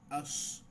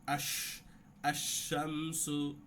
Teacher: শিনের ক্ষেত্রে কি হবে খেয়াল রাখবেন যে বাতাসের ফিসফিসানি থাকতে হবে।